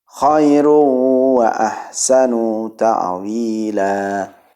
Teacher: Terlalu panjang, tidak boleh. Bacanya hanya 2 harokat seperti halnya mad tabi'i. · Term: mad iwad